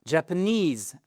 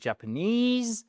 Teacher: the stress is on the last syllable